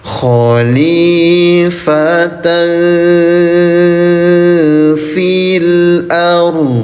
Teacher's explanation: namanya ikhfa. Cara bacanya samarkan bunyi tanwinnya selama dua ketukan.